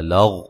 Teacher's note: غین کو موٹا ادا کریں گے، ہلانا نہیں